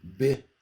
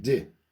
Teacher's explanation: They differ only in one phonological feature, which is the place of articulation.